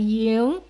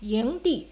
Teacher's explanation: start lower, then make a clearer rising tone. Let the pitch be higher